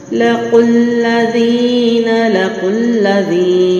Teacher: یا مد ہے اس لیے لمبا لے کے جا رہی ہوں. اور قاف کو موٹا، لام کو باریک